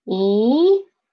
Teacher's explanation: second tone is rising up